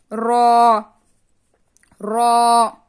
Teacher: جب زبان کے کناری کا پوشت، کناری یعنی یہ کناری کا پوشت جب اوپر والے 3 دانتوں کے مسوڑوں سے، یہ دانت ہوتے ہیں، یہ مسوڑے ہوتے ہیں، مسوڑوں سے لگنے سے را ادا ہوتا ہے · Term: حرف طرفیہ